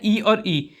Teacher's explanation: फिर हमारा आता है ई और ई। ई और ई जब छोटी ई और बड़ी ई का उच्चारण करेंगे तो हमारा होगा वो तालु से